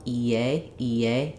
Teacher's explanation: when we move from the high front e vowel to the a vowel EA EA there should just naturally be a little gliding Y sound that happens